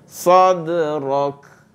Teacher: Pastikan ada hamas pada kaf itu, beri hak dan tunaikan sifat huruf kaf apabila dia dalam keadaan waqaf ataupun sukun. Ya. Mana kita waqaf tu kita menyukunkan dia lah, mematikan bunyi kaf tu.